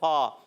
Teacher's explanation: فا کا مخرج اوپر والے دانتوں کے کنارے نیچے والے ہونٹ کے تر حصے سے لگتے ہیں تو ادا ہوتا ہے فا.